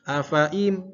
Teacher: gunnah itu pasti bikin hidung kita bergetar